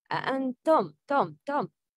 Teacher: the sound of mim is clear because it's followed by hamza